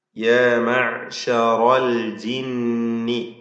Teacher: ഈ വചനങ്ങളിൽ പ്രധാനമായി നാം അറിഞ്ഞിരിക്കേണ്ട തജ്വീദ് വശങ്ങൾ: യാ മഅ്ശറൽ ജിന്നി, അതിൽ റായിന് തഫ്ഹീം എടുക്കണം, മറ്റക്ഷരങ്ങൾക്കൊന്നും തഫ്ഹീം വരരുത്. യാ മഅ്ശറൽ ജിന്നി, ആയിനിൻ്റെ ഉച്ചാരണം പ്രത്യേകം ശ്രദ്ധിക്കുക.